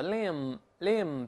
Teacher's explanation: 注意我们说了，mb▁结尾的话，这个▁b▁一般都是不发音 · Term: b▁不发音